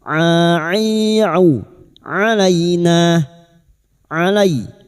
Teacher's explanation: huruf ain wastul halqi makhrajnya ada pada tengah tenggorokan